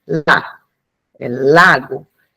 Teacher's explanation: Bem, em termos articulatórios, a produção da lateral alveolar, né, ou seja, o lá, é feita com o abaixamento do dorso da língua e com a ponta da língua levantada à região dos dentes e dos alvéolos